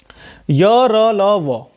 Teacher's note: य का उच्चारण स्थान तालु, र का वर्त से यानी कि दंत मूल, ल का भी वर्त से यानी कि दंत मूल। ठीक है, और व का दंतोष्ठी यानी कि ऊपर के दांत और निचला होंठ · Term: अंतःस्थ व्यंजन